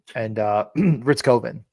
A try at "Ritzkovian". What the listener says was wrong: The I is not silent here.